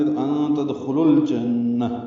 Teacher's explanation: لام ساکن پہ اظہار، نون مشدد پہ غنہ